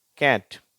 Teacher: அதுல வந்து இந்த ஏ என்ற எழுத்து எப்படி உச்சரிக்கப்படுகிறது அ என்று சரியா ஆ ன்னு உச்சரிக்கப்படவில்லை ஏ என்றும் உச்சரிக்கப்படவில்லை ரெண்டுத்துக்கும் இடைப்பட்ட ஒலி